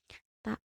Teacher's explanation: ujung lidah ditekan dan dikeluarkan nafas yang banyak, suara tidak boleh menjadi C.